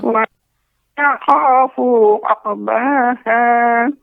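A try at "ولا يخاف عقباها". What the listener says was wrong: Fu-nya pendek. Wala yakhafu uqbaha. Ya, uqu. Ya, tidak terlalu cepat Nek untuk uqu ya, tidak tapi uqba cukup dengan dipantulkan.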